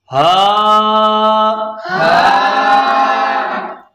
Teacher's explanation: انتہائی حلق یعنی حلق کے نچلے حصے سے ہا ادا ہوگی